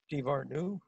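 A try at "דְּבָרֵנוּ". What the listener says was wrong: Very close. It's Enu. Divarenu.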